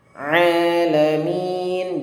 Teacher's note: Ingat ain di sini makhrajnya di tengah tenggorokan dan ditekan membacanya. Alamin, jangan dibaca alamin, itu hamzah. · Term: huruf ain